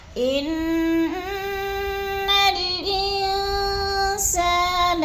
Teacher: ان پہ جو ہے اخفا ہو رہا ہے، آواز کو ناک میں چھپانا ہے، یعنی غنہ کرنا ہے، اخفا کرنا ہے۔